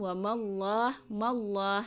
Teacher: Wa mallah, nah ini juga kalau ini tafhim ya. Lam jalalah sebelumnya harakatnya fathah ya, jadi tebal